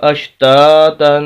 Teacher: یہاں پر ہم نے غنہ کرنا ہے، تنوین ہے، دو زبر دو زیر دو پیش کو تنوین بولتے ہیں۔ یہاں پر ہم غنہ کریں گے تو ناک میں آواز چاہے گی، غنہ کہتے ہیں ناک میں آواز لے جانے کو۔